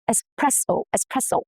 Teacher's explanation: The S stays intact and the stress falls on the second syllable, which is press.